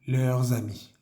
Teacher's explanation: Tenemos que hacer nuevamente nuestra conexión pronunciando la S de leurs y la siguiente palabra comienza por A